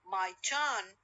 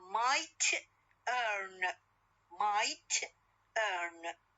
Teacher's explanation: فاذا the answer that one case that t is fully aspirated initial in turn and in the other case is not, being final in might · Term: juncture